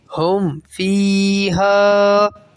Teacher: ہم فیہا کے اندر غنہ نہیں ہوگا کیونکہ فا جو ہے وہ یہ اخفاء شفوی میں، اظہار شفوی میں چلا جائے گا۔